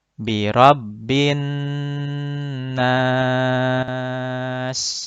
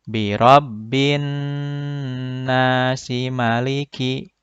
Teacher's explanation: Kalau berhenti, menjadi mad arid lisukun. Contohnya dibaca dengan 4 harokat.